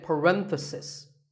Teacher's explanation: The stress is on ren.